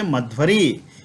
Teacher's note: तब मध्वरी, मधु और अरि ये मिलकर के मध्वरी, यहाँ जो उपस्थित उकार है उसके स्थान पर वकार आ जाएगा